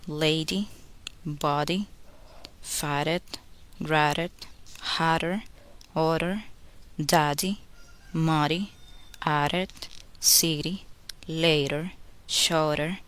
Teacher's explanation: To make the sound D between vowels and after the consonant R, tap the tongue quickly on the palate without holding it. Then go on the next vowel.